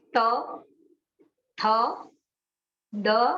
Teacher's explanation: દંત્યાહા છે ત્યાં દાંતની સહાયથી જ બોલવાનું છે.